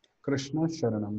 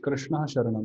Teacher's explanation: Vishnu Sarga will optionally convert into Sha, and optionally it will remain the same.